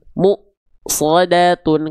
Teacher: Perhatikan pada bagian penggalan mu-nya pasti dia akan terhentak atau kayak ada remnya di sana. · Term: hamzah sukun